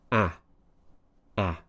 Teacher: The ah sound is a nice open sound. We're spreading the lips slightly, pushing the tongue down and forwards below the bottom teeth. Open up. Ah.